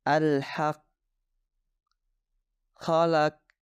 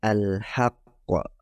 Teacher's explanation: tidak menambahkan Qalqalah ketika Q memiliki sukun ini menyebabkan suara Q tidak terdengar seolah-olah tidak ada apalagi jika muncul di akhir kata kesalahannya berbunyi seperti ini Alhaq